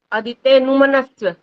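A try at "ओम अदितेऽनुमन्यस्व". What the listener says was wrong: मन्यस्व है, मन्य, य का उच्चारण नहीं हो पा रहा है यहाँ पर। ओम अदितेनुमन्यस्व, ओम अनुमतेनुमन्यस्व, ओम सरस्वत्यनुमन्यस्व। जब आधा और पूरा आता है ना तो वहां बल लगना चाहिए। त्य त का उच्चारण तभी सुनाई देगा, नहीं तो सरस्वते ऐसा बोल जाओगे।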